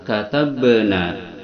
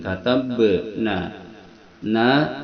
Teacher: ba itu makharijul hurufnya pada syafatain yang disentuhkan itu pada bibir bawah dan atas sebagaimana mim.